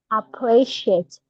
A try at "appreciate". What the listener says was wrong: Don't say ah, it's not like a ah. Appreciate.